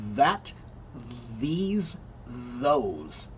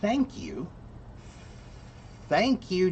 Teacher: when you listen to that th it has that that sound, that buzzing sound, right? But the word thank you, thank you does not have that same buzzing sound. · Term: voiced th